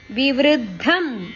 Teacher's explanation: ವೃ ಅಕ್ಷರದ ಮೇಲೆ ಆಘಾತ